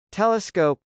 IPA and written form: tˈɛləsk.oʊp (telescope)